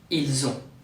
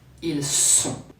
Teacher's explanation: Be careful to not confuse the Z sound with an S, otherwise you will say there are, ils sont.